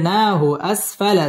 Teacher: না মধ্যে তাবাই এক আলিফ টেনে পড়তে হবে